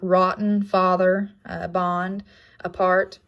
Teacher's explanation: description is low back unrounded tense uh sample words like rotten father uh bond apart and the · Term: script a, script A